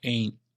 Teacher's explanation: And that final N sound is a vowel sliding into the N sound. · It's often pronounced in rapid speech without that final T